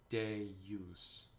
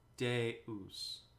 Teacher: deus it's very easy to put a j there day use when you sing it try not to put the j sound in there